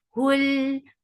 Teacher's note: Hul, for the circle ellipse attached with lam. Lam will get sifa of tawassut, and lam is light.